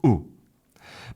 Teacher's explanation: You'll notice that uh pull is one sound. It's a monothong. So which means the vowel sound doesn't change. It goes ooh. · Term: monophthong